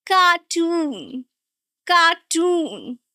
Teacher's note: the second one is a long vowel sound, stretched sound, and the stress is also on the second syllable.